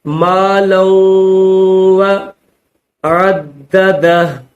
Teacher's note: لام کے اوپر تنوین 2 زبر ہے اور واو کے اوپر تشدید ہے، اس وجہ سے غنہ کیا جائے گا